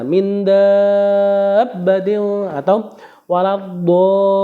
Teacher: Jadi cara baca min dabbatin atau waladdallin ya, 6 harokat.